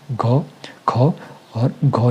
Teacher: तो इनको बोलने में मुख से अधिक हवा निकलती है। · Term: महाप्राण